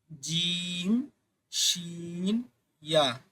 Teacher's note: জিহ্বার মধ্যখান তার বরাবর উপরে তালুর সঙ্গে লাগিয়ে